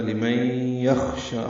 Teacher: شین کو 2 حرکات لمبا کرنا ہے